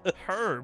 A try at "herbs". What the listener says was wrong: Herbs. Without the H. Herb. Herb.